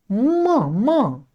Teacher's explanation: म का स्थान में क्या आ जाएंगे, ओष्ठ प्लस नासिका।